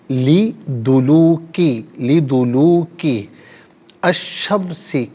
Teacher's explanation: لام کی آواز نہیں آئے گی، شین کی آواز کو ادا کیا جائے گا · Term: حرف شمسی